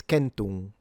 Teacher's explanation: In classical Latin is centum, with a fully nasalized M